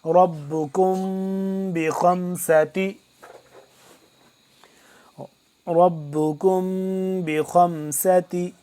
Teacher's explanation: اس پہ اخفا کریں گے، را کو موٹا کر کے پڑھیں گے